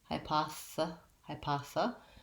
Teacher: the high syllable is short and unstressed so hypa and then our th is a voiceless th sound sounds like hypoth even though it looks like the word thesis